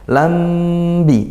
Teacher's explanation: Lambi, nah, ini hukum mim sukun juga, mim sukun bertemu ba, maka ikhfa syafawi, yaitu dibaca dengung ya